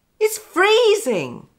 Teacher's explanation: notice the stress on freeze